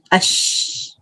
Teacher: اور کہاں سے دیکھیے بازو میں زبان بھی ہے, زبان کے بیچ سے نکلتے ہیں اش, اور اوپر اس کے مقابل تالو جو ہے اس کو لگتے ہیں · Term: شین